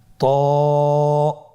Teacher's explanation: জিহ্বার আগা সামনের উপরের দুই দাঁতের গোড়ার সঙ্গে লাগিয়ে উচ্চারিত হয়। · এটা উচ্চারণের সময় অবশ্যই মোটা করতে হবে এবং উচ্চারণ করার সময় 1 আলিফ টেনে পড়তে হবে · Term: মোটা হরফ